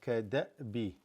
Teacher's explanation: This hamza with a sukoon, and the way we're reading, kada'bi. You would just completely stop your breath, your voice, everything